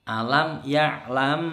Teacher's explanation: Ini bacaan Ikhfa Syafawi jadi dengungnya mingkem lama